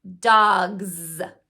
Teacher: s I say it as a z sound dogs that's because Z is also a voice box on sound so because I had my voice box on for G I keep it on for Z dogs this is not representing the S sound it's representing the